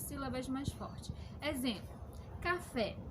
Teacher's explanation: aquelas sílabas que são mais fotos são as últimas o café a última sílaba mais forte é o fé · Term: oxítona